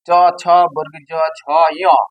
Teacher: চ ছ বর্গীয় জ ঝ ঞ, এই বর্ণগুলো উচ্চারণ করার সময় তালু স্পর্শ করে বলে, জিহ্বা তালু স্পর্শ করে বলে এটাকে বলা হয় তালব্য বর্ণ